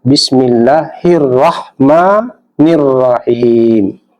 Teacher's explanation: alif lamnya tidak dibaca karena ada alif lam yang bertemu dengan salah satu huruf syamsiah. Huruf syamsiah di sini adalah ra. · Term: alif lam syamsiah